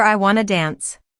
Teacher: The ending sound of want blends into the beginning of two and both T sounds vanish. That's how we go from want to to wanna.